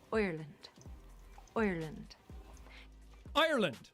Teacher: My favorite place to start as a jump-off place in an Irish accent is the sound I. Now in English we say I, but in an Irish accent we say oi, as in the word oil.